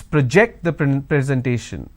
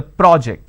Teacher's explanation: it means it's a verb now that's a rule of pronunciation when i'm stressing on the second syllable it's a verb